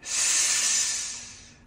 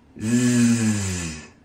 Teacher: The air comes out the same, the corners of our mouths are the same, and our tongue touches the bottom teeth. Everything is the same, except we add the vibration.